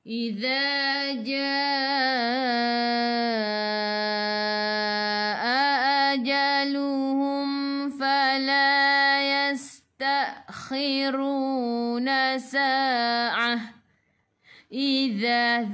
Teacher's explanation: hujung lidah keluar pada gigi depan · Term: zadhi